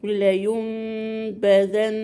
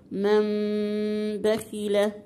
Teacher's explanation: يبقى ايه اللي حصل؟ نطقتي النون ميم، ما نطقتش نون بقى كده، نطقتيها ميم وجبت غنة في الميم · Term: اقلاب